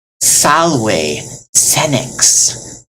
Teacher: You are never going to make a hard Z sound like rose. No, you don't want to hear vibration. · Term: soft as silk